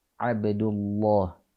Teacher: jadi dibaca tafkhim huruf lam yang ada pada level jalalah